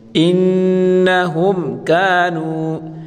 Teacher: میم ساکن کے بعد حروف کاف ہے، اظہار کا حروف ہے، تو یہاں اس میم کو ہم ظاہر کر کے یعنی یہاں غنہ نہیں کریں گے۔ انہم کانوا، کانوا، کاف الف زبر کا، الف مدہ ہے، نون واو پیش نو، واو مدہ ہے، اس کو بھی ایک الف کی مقدار کھینچ کر پڑھیں گے، اور واو مدہ کو بھی ایک الف کی مقدار کھینچ کر پڑھیں گے۔